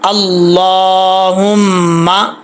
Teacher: लाम के ऊपर स्टैंड ज़बर है, खड़ा ज़बर है, इसको एक अलिफ की मिकदार लंबा करना है।